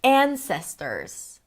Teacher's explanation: An, primary stress, long, ses, right there in the middle, secondary stress, ters, short. Ta-da-da. Ta-da-da.